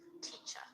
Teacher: it's not a very hard T that you spit out. It's like a sort of light T.